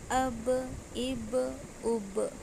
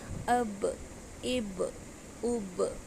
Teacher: آواز ٹکرا کے دوبارہ آ رہی ہے نا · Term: قلقلہ